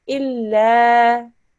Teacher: this is a lam mushaddad, but it's not part of the word Allah. So it's just a thin lam